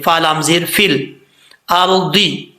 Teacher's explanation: را ساکن سے پہلے زبر تو را پر پڑھا جاتا ہے، اس کو پر پڑھیں گے